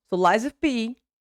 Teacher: notice that you barely hear me saying of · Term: link words together